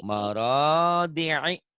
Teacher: D-nya pendek, ro-nya doang yang panjang.